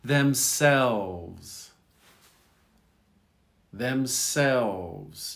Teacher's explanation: You don't hear the L much.